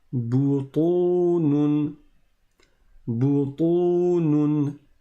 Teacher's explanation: le ta, il est grave, il est emphatique